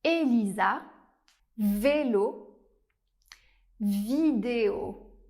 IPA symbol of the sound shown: e